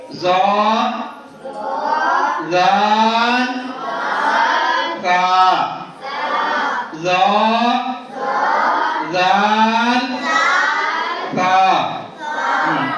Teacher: ज़बान का सिरा और ऊपर के दांतों के अंदरूनी किनारे से अदा होते हैं। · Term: हुरूफे ली सवैया